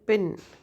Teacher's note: pin is aspirated because we have to fill the air in our front part of our mouth